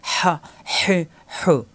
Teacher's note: হরকত আসলে হা, হে, হু, মাকড়াস ঠিক রেখে কণ্ঠনালীর মাঝখানে চাপ দিয়ে ফ্যাঁস আওয়াজ।